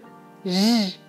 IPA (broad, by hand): ʒ